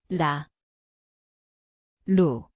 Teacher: Ia berbunyi seperti A garis miring L, tempatnya di hujung lidah, ketukan ringan. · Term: 리을